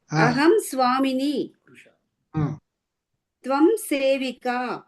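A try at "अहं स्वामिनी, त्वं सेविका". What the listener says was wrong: Good.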